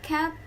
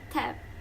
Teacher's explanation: These two words are identical in terms of the vowels and final consonant They only differ by the initial phoneme. And this involves a small difference in place of production, velar versus alveolar.